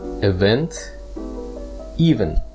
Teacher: something that is happening so for example a sporting event and in this word the emphasis is placed on the second syllable event